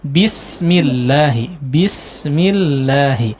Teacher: di huruf sinnya bismi, diperjelas lagi si hamesnya ya. Hamesnya tadi kurang jelas, kemudian kurang tipis ya Pak.